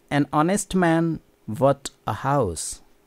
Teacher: Both the word honest and house start with the first letter H, but the first letter H is silent in honest. We do not say honest, it is honest.